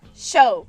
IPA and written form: ʃoʊ (show)